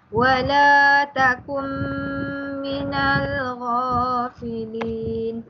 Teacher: Kemudian wala takum minal ghafilin pun sama juga, perlu dibaca dengan dengung. Nun mati bertemu dengan mim, juga idgham ma'al gunnah.